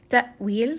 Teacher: hamza is going to have a sharp jerking sound, so make sure that you are giving it a little bit of that jerk.